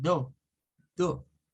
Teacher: Pero vienen los británicos y no les van a decir a uno door, sino que van a eliminar el sonido de la R y van a hacer un sonido de O